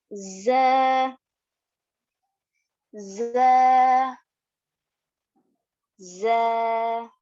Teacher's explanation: اس میں ٹنگ ریسٹ نہیں ہوگی, یعنی کہ ٹنگ زبان کے ٹنگ 2 دانتوں کے نچلے 2 دانتوں کے پیچھے سہارا نہیں لے گی, صرف اوپر اور نیچے کے 2 دانتوں کو پریس کرنے سے ز یہ حرف ادا ہوگا. زا کی آواز میں وائبریشن ساؤنڈ بھی ہوگا, جس طرح اس طرح سے اسٹیٹک کا جو ساؤنڈ ہوتا ہے اس طرح کا ساؤنڈ آتا ہے.